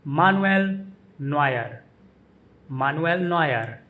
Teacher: The emphasis is on the middle syllable in his first name, Nu, Manuel, and Noy in Neuer.